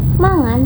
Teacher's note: mangan menunjukkan perubahan bunyi k menjadi eng yang membuat lavanya terdengar lebih lembut dan mengalir.